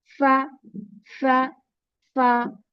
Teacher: outer part of the lips, inner part of the lips, round your lips, and lower lip, with the help of lower lip to the edge of the upper teeth